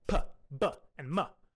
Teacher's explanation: A sound could be bilabial, pronounced with both of the lips, like p, b, and m.